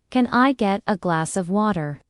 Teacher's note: Flap T gives water.